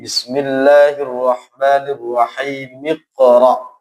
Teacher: Artinya hamzah wasal, hamzah yang ketika di tengah ini hilang.